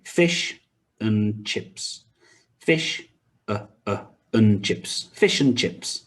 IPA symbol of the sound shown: ə